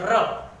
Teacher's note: र बोलते तो अपनी जीभ कंपन करती है, इसीलिए लुंठित वर्ण कौन सा है हमारा?